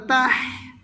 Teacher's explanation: হা গলার মাঝে চাপা দিতে হবে, তাহলে সহি শুদ্ধ করে উচ্চারণ হবে।